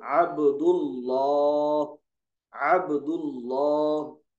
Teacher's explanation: لام جلالہ کو پر یعنی موٹا پڑھو، جبکہ لام جلالہ سے پہلے زبر اور پیش ہو، جیسے عبد اللہ، عبد اللہ۔